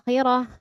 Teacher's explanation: cara membacanya adalah dengan dipanjangkan dua harokat atau sama dengan satu alif, dua ketukan gitu ya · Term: mad badal